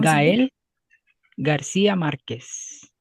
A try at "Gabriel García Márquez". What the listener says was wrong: didn't pronounce the B. it's Gariel.